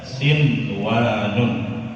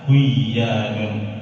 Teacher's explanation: Walaupun di situ ada nun bertemu dengan waw, tidak boleh kita idghamkan, tidak boleh kita masukkan, tidak boleh kita baca siwanun, tapi dibaca jelas sinwanun.